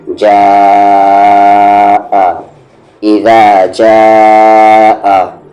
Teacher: جیم کے ساتھ الف ہے، جا پلس اس پر مد ہے، مد کے سمبل کے بعد یہاں پر حمزہ ہے، تو اسے ہم 3 سے 4 حرکت کے ایکول کھینچیں گے